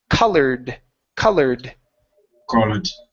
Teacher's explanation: the word ends with an R so this Ed ending is a d